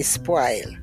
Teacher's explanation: we do not use the rounded vowels in Jamaica they're all broad a vowels